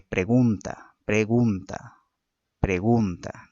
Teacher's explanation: la palabra tiene una acentuación tónica en la segunda sílaba